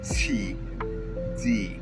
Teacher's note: In English, you pronounce T and D by putting your tongue right in between your upper teeth and your bottom teeth. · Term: T and D sounds